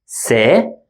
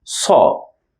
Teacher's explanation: one is soft س and the other one is hard ص